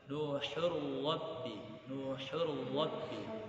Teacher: tanwin berjumpa dengan ro, jangan sampai berdengung karena dia idgham bila gunnah